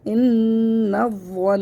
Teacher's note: حمزہ نون زیر ان، نون وا زبر نو، ان، وا، نون زبر ون، ان، ون، نون زبر نا، ان، ون، وقف صورت میں نون کا زبر حذف ہو جائے گا، نون مشدد کو غنّے کے ساتھ پڑھیں گے